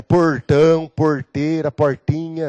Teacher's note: O R é retroflexo, né? É vibrante dentro da boca